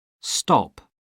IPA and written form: stɒp (stop)